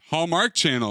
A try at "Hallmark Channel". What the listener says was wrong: Why did you say Hallmark Channel? Why did you put the emphasis there?